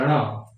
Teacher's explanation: आगे हम देखते हैं ण, इसको टवर्गी न बोलते हैं, न नहीं होता है ये, टवर्ग ण, ण, यानी कि नासिका के साथ मूर्धा में जीभ टच होती है ण, और तब ये आवाज निकलती है ण।